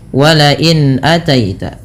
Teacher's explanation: Al halqi atau halqi berasal dari kata halaq, artinya tenggorokan, yang dimana huruf hamzah merupakan huruf yang keluar dari tenggorokan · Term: izhar halqi